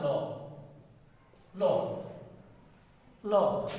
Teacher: ল যখন বলো তখন জিহ্বাটা একদম শুয়ে থাকে, অর্থাৎ একদম স্বাভাবিক থাকে, মুখের দুই পাশ দিয়ে, জিহ্বার দুই পাশ থেকে বাতাস বেরিয়ে আসে, ল, ল। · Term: পার্শ্বিক ধ্বনি